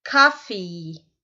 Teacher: Então, nós temos o som do O e, principalmente nos Estados Unidos, eles falam bem aberto esse som. Fica um som mais para A. E no final nós temos 2 vogais.